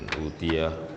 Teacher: Karena memang ada bacaan di mana di situ bertemunya hamzah dengan huruf mad, sehingga huruf hamzah ini kemudian dihilangkan dan diganti dengan bacaan mad atau bacaan panjang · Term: mad badal